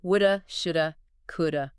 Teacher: So, the have reduces down to basically the smallest vowel sound possible, thewah, like an H, and it just blends right in. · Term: the schwa